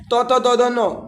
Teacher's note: त थ द न उसका उच्चारण दंत से होता है।